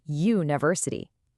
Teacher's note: when you say university, you are actually making a consonant Y sound.